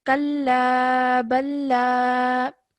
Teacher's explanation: Over here, remember that this is an alif madda, so that means we have to elongate the la sound for about 2 seconds